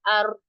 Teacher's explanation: थोड़ा सा आपकी जो जुबान है वो रोल हो जाती है। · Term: तकरार